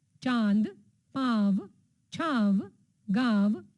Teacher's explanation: अनुनासिक इसके उच्चारण में नाक और मुंह दोनों का प्रयोग किया जाता है